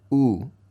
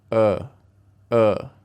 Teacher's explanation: try to feel where the sound comes from in your mouth so the u sound comes a bit closer to the front like this oh but the uh sound comes a little bit more back